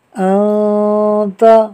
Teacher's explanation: حمزہ نون زبر ان، تا زبر تا، انت، نون ساکن کے بعد تا حروف اخفاء میں سے ہے، لہٰذا اخفاء ہوگا، یعنی نون ساکن میں غنہ ہوگا